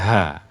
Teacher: Ini kan diakhiri dengan terbukanya mulut ya, tidak tertutup. Demikian pula makhrajnya tidak tersentuh. Ha, ya memang makhrajnya cuman pangkal tenggorokan ya kan.